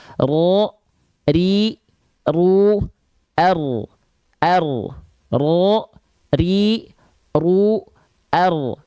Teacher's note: dia bergetar tapi tidak dengan getaran yang berlebihan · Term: huruf ro